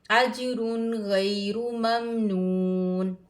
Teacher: نون تنوین کے بعد حروف ہلکی حمزہ ہا عین ہا غین خا میں سے غین آیا ہے۔ یہاں پر ہم اظہار کریں گے، غنہ نہیں کریں گے۔